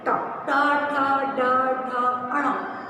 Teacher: तीसरा वर्ग है ट वर्ग, ये मूर्धा को स्पर्श करते हैं